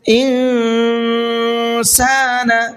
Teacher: نون ساکن کے بعد میں اخفا کے جو 15 حروف ہیں ان حرفوں میں سے اگر کوئی بھی ایک حرف آ جاتا ہے تو وہاں نون کی آواز میں تھوڑا سا اخفا کر کے پڑھتے ہیں اور آواز کو ناک میں چھپا کر کے پڑھتے ہیں